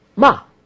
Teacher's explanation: It starts from a high pitch and then falls. Ma. Fast.